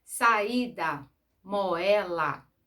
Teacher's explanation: Hiato, nós temos duas vogais pronunciadas separadas